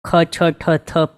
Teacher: કેવી કરેલી છે છે મોઢામાંથી હવા નીકળે આ રીતે બોલવાનું છે ખ છ ઠ થના કમ્પેરીઝનમાં આ બોલતા ટાઈમે કંઈક વધારે પ્રયત્ન કરવા જરૂરી છે એવી છે મોઢામાંથી હવા કાઢીને બોલાય એવી છે